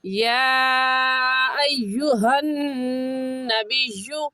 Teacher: अय्युहन में नून मुशद्दद है और नून मुशद्दद पर हमेशा गुन्ना होता है, तो गुन्ना करेंगे।